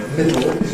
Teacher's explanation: you don’t have lateral release any more in [ˈmɪdo], you don’t have a lateral but instead a vowel, [ˈmɪdo].